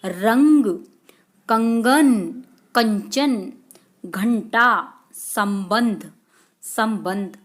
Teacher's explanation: अनुस्वार उच्चारण में नाक से अधिक सांस निकलती है और न या म की सी ध्वनि आती है।